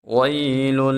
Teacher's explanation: ویل، جب یا ساکن ہو اور اس سے پہلے حرف کے اوپر زبر آ جائے، یا لین ہوتی ہے، تو یا لین کو ہم ایک الف کے برابر کھینچ کے پڑھتے ہیں